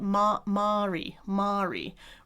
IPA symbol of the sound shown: a